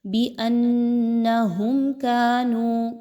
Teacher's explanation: میم ساکن کے بعد کاف کا حرف آ گیا، یہاں پر آپ نے اظہار شفوی کرنا ہے، کسی طرح کا غنہ نہیں ہونا چاہیے۔